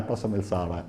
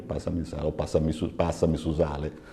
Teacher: Una L velare, sa L antica. Mentre in Cavesuso pronunciate una L come in italiano.